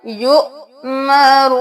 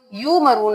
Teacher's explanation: گیا، یؤمرون، یو مرون نہیں کرنا، واو کو چھوڑ دینا ہے، حمزہ کے اوپر جزم ہے تو جھٹکا دینا ہے